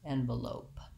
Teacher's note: The second E then says the vowel schwa, it sounds like V, and we have secondary stress on this lope syllable, so it has the clear vowel O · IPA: /ˈɛnvəˌloʊp/